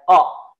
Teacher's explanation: Yang pertama, ya, adalah tempat keluarnya qa, ya, pangkal lidahnya ke daging.